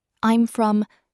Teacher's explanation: The I'm is quick and light, almost swallowed. The stress is on the place name.